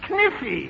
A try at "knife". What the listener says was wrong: No, the word is knife. K is the silent letter. K is always silent in front of N.